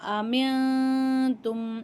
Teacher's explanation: இங்கே இஹ்ஃபாவுடைய சட்டம் வரதுனால குன்னா செஞ்சு ஓதணும்.